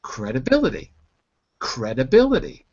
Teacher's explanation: notice how I said a d instead of a t